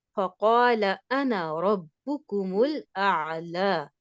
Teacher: انا، یہاں پہ اس کے الف کی ساؤنڈ ختم ہو جائے گی، ہم ایک ہی کاؤنٹ دیں گے، ایک ہی حرکت دیں گے.